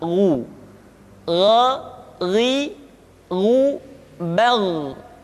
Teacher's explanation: Ketika dhammah, baru bibir kita dimonyongkan sehingga keluar vokal u dengan sempurna.